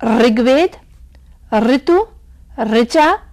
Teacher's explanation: ऋ का उच्चारण संस्कृत से हिंदी में आते आते तक र में ई की मात्रा लगाकर जिस तरह से ध्वनि उच्चरित होती है उस तरह से किया जाने लगा